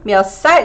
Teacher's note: It sounds like this 살, the tense 살, because you know, it's released after that ch sound